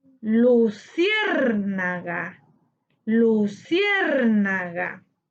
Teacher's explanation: Luciérnaga tiene su sílaba tónica en cier, correspondiente a la antepenúltima sílaba. Le colocamos tilde porque esta palabra es una palabra esdrújula, cuya acentuación o sílaba tónica se encuentra en la antepenúltima sílaba.